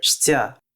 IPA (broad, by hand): ʂʲtʲ